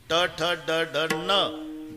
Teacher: वरच्या टाळूला जिभेचा स्पर्श आहे